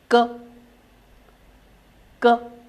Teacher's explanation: the back of the tongue is raised to form a closure like this the air escapes with the sudden release of the